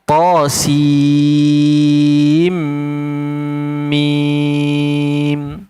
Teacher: Masukkan huruf nun ke dalam mim dengan dengung. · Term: idgham maal ghunnah